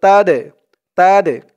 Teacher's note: এই দালটা হচ্ছে কল কলার হরফ ধাক্কা দিয়ে পড়তে হবে